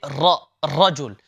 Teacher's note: ra in particular holds a very unique quality which is known as takara it means a reoccurring sound